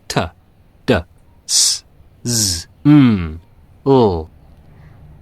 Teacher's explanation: Alveolar, using the front part of the roof of the mouth behind the upper teeth.